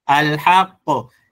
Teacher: So the way umeisoma al-haqq, sauti yake inatoka tena, hiyo ni yenye tukisema qalqala yenye nguvu kwa sababu ina shadda, na unavyoidhihirisha alhaq, sio alhaq.